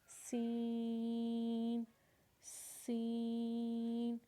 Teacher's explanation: اور سین کو بھی آپ نے 5 الف کے برابر کھینچنا ہے۔ 5 الف کے برابر مطلب تھوڑا لمبا کر کے کھینچنا ہے، سین، سین۔ سین کے بعد ہمارے پاس ہے شین، شین۔